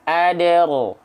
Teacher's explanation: Jadi dalnya ketika sukun dipantulkan dulu secara ringan. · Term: qalqalah sughra